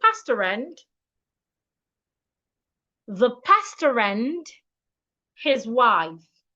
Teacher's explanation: So for me to read this sentence correctly, I need to link the R in pasta and the a in and. It means that pastor and the word and should be pronounced as one word.